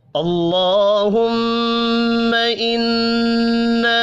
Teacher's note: میم مشدد پر غنہ کریں گے۔ انا نون مشدد ہے، اس پر بھی غنہ کریں گے، اور الف مدہ ایک الف کے برابر کھینچ کر پڑھا جائے گا۔